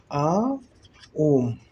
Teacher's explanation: इसके उच्चारण में 3 मात्रा का समय लगता है, इसीलिए इसको क्या कहते हैं, त्रिमात्रिक स्वर कहते हैं।